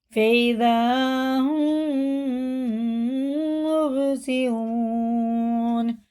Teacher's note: میم ساکن کے بعد میم ہے تو ادغام شفی ہوگا، غنہ کر کے پڑھیں گے